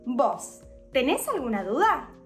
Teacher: Utilizando el voseo y el verbo con la entonación en su última sílaba